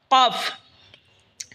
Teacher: কফ জিহ্বার গড়া তার বরাবর উপরে তালের সঙ্গে লাগে উচ্চারণ হবে কফ।